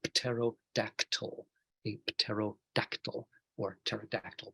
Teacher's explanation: because we don't like saying pt in English. So we just pretend the p is not there.